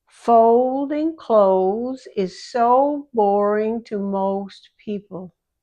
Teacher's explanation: The long O sound, jaw is low and the lips pull inward to make a round O shape.